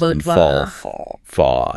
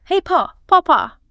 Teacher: the lips round forward as if they're going to make a W sound, but they don't quite release it. So bottle becomes and fall, fall. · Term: dark L